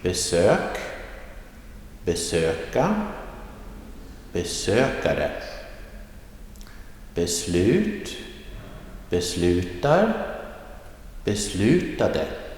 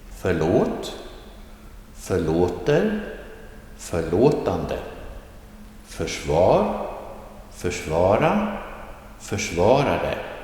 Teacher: the rising tone happens in the second syllable of the word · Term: accent 1